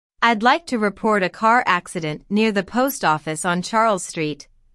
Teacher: Notice how the keywords car accident, post office, and Charles Street are stressed.